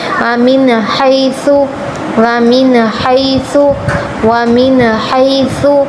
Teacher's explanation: حیث ہا اور سا نکالیں، حیث، سا میں چیٹی کی آواز نہ آئے، ہا حلق پر زور دیں